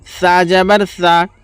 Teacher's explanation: এই জিহ্বাটাকে দুই দাঁতের মাঝামাঝি নিয়ে আসতে হবে । জালের যেরকম জাল অক্ষরটা বললাম সেইভাবে এই সা উচ্চারণটা হবে।